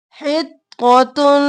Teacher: حط اور طا، طا دو بار اور موٹا ، حط اور طا اور تن، یہاں پر ادغام مع الغنہ،